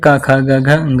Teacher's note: कंठ से उत्पन्न होने वाले वर्ण है